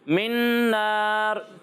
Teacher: अच्छा, बीच में मिन पे रुकना नहीं है, ठीक है। मिन नार मिला कर पढ़ना है, ऐसा नहीं लगना चाहिए कि आप मिनन नार पढ़ रहे हैं, ये मिनन नार नहीं है, ठीक है।